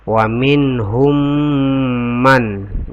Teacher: Kenapa berdengun? Karena ada mim sukun ketemu dengan mim dan hukum bacaannya itu adalah idgham mutamatsilain.